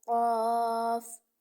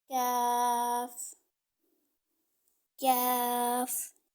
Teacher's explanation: جو قاف ہے 2 نقطوں والا، وہ زبان کی جڑ اور تالو کے نرم حصہ سے ادا ہوتا ہے، اور جو کاف ہے وہ زبان کی جڑ اور تالو کے سخت حصہ سے ادا ہوتا ہے